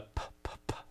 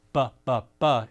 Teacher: You'll notice you're using your lips to form these consonants. And that the p, p, p, a P is voiceless. The b, b, b is voiced.